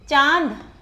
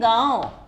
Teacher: चंद्र में बिंदु लगने के बाद इसे वर्ण के ऊपर, चंद्र बिंदु के ऊपर में लगाया जाता है। इसका उच्चारण नाक और गले दोनों से होता है। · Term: अनुनासिक